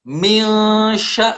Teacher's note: Nun mati ketemu huruf sya. Milsya, nunnya menjadi hilang, menjadi dengung, disebut dengan ikhfa.